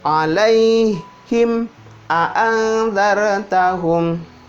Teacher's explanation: Jadi mim mati ketemu sama amzah. Bibir buka. Him rapat, bibir atas, bibir bawah.